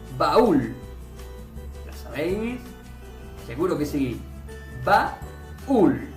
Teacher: A, U con acento es abierta más cerrada con acento. Por tanto es un hiato